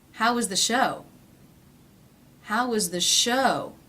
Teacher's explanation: falling intonation on a question that does not have a yes-or-no answer